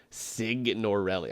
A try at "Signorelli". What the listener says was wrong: like sign. You pronounce the G.